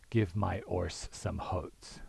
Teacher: You have H-dropping in horse, and then you have a sort of parallel intrusive H in words like oats, right? So if a word begins with a vowel, if you're an H-dropper, you might not know whether it has a vowel or starts with an H, and so you might sort of randomly insert H's there.